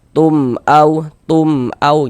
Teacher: Karena dia idhar maka dibaca jelas, mim sukunnya dibaca jelas, kemudian tidak didengungkan, maka dibaca pendek saja. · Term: idhar syafawi